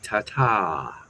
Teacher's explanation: now I'm wondering if they drop the R sound and say ta ta, which would mean something totally different here.